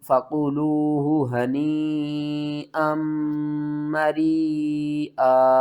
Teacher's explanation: یہاں پر ہم کیا کریں گے، حمزہ کو ملائیں گے میم کے ساتھ، اور میم مشدد ہے، یہاں پر غنہ بھی کریں گے، ادغام مع الغنہ۔ یہاں پر بھی بڑی مد ہے، اس کو بھی آپ نے 5 الف کے برابر کھینچ کر پڑھنا ہے۔